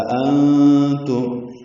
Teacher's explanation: دو حمزہ اکٹھے ہوئے ہیں، پہلا حمزہ بالجہر، دوسرا حمزہ بالتسہیل پڑھا جائے گا ، أأنتم، نون ساکن پہ اخفا ہے، میم ساکن پہ اظہار